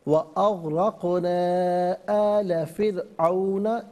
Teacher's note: अग़रक़ना में आप देखिए आखिर में मद की अलामत है, मद मुनफ़सिल 3 से 5 अलिफ की मिक़दार खींचकर पढ़ना चाहिए। यहाँ रा साकिन को बारीक पढ़ेंगे इसलिए कि इससे पहले फ़ा के नीचे ज़ेर है।